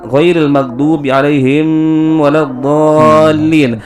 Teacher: huruf mim di situ sukun, akan tetapi ditahan oleh Habib Umar Al-Hafiz